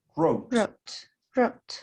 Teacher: No hay W, ni en presente, write, ni en pasado, wrote. Empieza con la R el sonido.